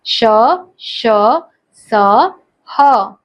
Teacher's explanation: इनके उच्चारण में वायु के रगड़ खाने से एक प्रकार की ऊष्मा यानी कि गर्मी सी पैदा होती है, अतः इन्हें ऊष्म व्यंजन कहते हैं।